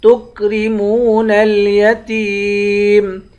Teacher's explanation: تا کو یا سے ملائیں گے، یا حروف مدہ ہے اس کو ایک الف کی مقدار کھینچ کر پڑھیں گے